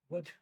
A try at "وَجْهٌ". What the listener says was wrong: What is the full way of saying it? Wajh. Ghun. Remember, the very first class that we had, we mentioned that we need to mention the full word of it. So wajhun.